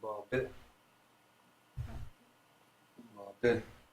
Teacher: This one, it almost sounds like a bop it, like almost like you'd stop it a bit. Bop it, almost like an H sound at the end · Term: glottal stop